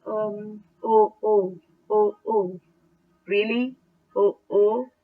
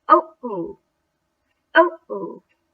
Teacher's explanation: There is a slight explosive noise that accompanies the first sound of the first word that you utter. Okay? And this noise is called glottal stop.